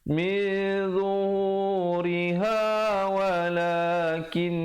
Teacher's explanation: Min zuhuriha walakin, dengungkan di situ 2 harakat wajibul qunnah